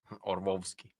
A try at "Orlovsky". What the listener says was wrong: You don't pronounce the L, remember? Orlovsky.